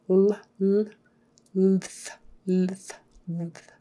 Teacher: your L is going to be produced lower, probably in the middle, so that you can then get the TH sound